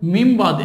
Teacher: নুন সাকিন পরে বা আসছে, এই নুনটা মিম হয়ে যাবে। এখানে মিন বা দিয়ে আছে, বলতে হবে মিম বাদ।